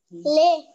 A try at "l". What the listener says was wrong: No, el sonido. Si usted me dice le, es la L con la E. El sonido es L.